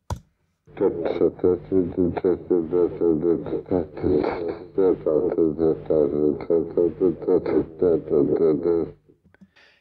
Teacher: he's actually not always achieving a complete stop. Sometimes it's more of a fricative because he's not articulating very accurately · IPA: /kə/